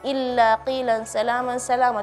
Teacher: harfal lam yang tasydid secara khusus ya, itu sangat-sangat dibaca dengan tebal